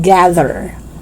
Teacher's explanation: don't make the mistake of pronouncing TH as D. No, it should be TH voiced.